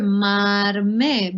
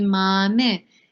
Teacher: some speakers will actually pronounce the ra, and you will hear marme. But other speakers might just want to say mame. It depends, but it's more customary that you could hear if there is a second syllable that you will actually pronounce it.